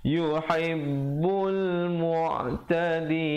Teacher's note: ba itu bersabdu, tekankan yuhibbul mu'tadin